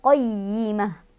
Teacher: Dinul qayyi, tekan ya, ya-nya ada tasydid, qayyimah. Taknya, tak marbutoh berubah menjadi hak sukun ketika berhenti